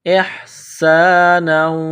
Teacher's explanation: سین میں سیٹی کی آواز پیدا کرنی ہے